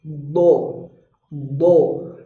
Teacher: Maka bunyi huruf istitolah ini hanya muncul kalau dia rokhwah, mengalir bunyi hurufnya. Jadi dia bukan syiddah, tapi rokhwah, mengalir hurufnya. Tapi mengalirnya tidak panjang.